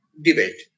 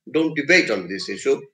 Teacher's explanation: there is a verb and therefore the accent is on the second syllable